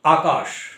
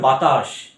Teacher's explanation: এগুলো উচ্চারণের সময় একটা শীষ জাতীয় আওয়াজ বেরোয় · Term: শীষ ধ্বনি